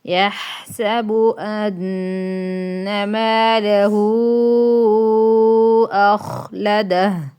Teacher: حلق کے اندر ہا کی ساؤنڈ کو لے کر جانا، ٹھیک ہے، درمیانے حلق پہ. یحسب ان، ٹھیک ہے، وہ نہ کرنا ہے، الف کو لمبا نہیں کرنا.